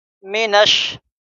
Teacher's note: نون کو ہم ڈائریکٹ ملائیں گے شین سے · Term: حروف شمسی